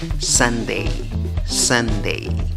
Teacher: divides la palabra en dos sílabas la que lleva la fuerza de voz en la primera sílaba contando de izquierda a derecha · Divides la palabra en 2 sílabas, la que lleva la fuerza de voz es la primera sílaba, contando de izquierda a derecha. En la escritura va una U en la primera sílaba, pero en la pronunciación tienes schwa, la que no es ni A, ni E, ni O. En la segunda sílaba otra vez tienes la A con el sombrero, ey.